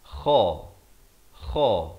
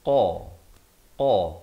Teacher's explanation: Di sini kha di hujung, di sini qaf di pangkal lidah